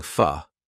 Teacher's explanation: the word for, a lot of the time, we don't complete that sound. We just go fa.